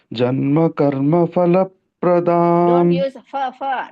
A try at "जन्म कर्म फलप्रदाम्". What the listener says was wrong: don't use fa janma karma pha you stress it janma karma falapradam pha in Sanskrit no fa phal falapradam pa you know how to do it pa you will say so stress it janma karma falapradam